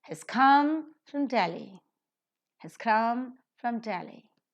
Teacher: Has is a helping verb, not accented. Come is a verb. Yes, it is accented and is to be aspirated as well. From is a preposition, not accented.